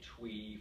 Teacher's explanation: the R sound more like a W. So sometimes students will say twee for tree or something similar to that.